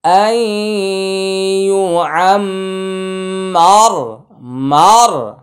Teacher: আমরা রয়ের উপরে ওয়াকফ করেছি, সাকিন দিয়েছি। রয় সাকিন তার ডাইনে জবর থাকলে রয়ের উচ্চারণ মোটা হবে। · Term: র মোটা